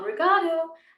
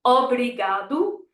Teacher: We want a nice popping open O, not ah.